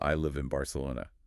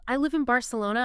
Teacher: It's anticipating the B. Yes, while your vocal cords are still trying to say the word in, your lips close in early anticipation of Barcelona. And what happens when you try to say an N sound with your lips closed together? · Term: assimilates